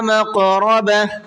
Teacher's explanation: قاف کے اندر قلقلہ کر کے پڑھنا ہے